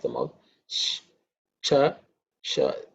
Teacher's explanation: This show is palatal show, so the tongue should be parallel to the roof of the mouth.